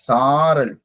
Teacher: சாரல் போது அது நெடிலிருந்து உச்சரிக்கணும். அதாவது வந்து சா சொல்லும் போது 2 மாத்திரை அளவு. சோ அது அந்த சொல் வந்து பெரிய சொல் உச்சரிக்கும்.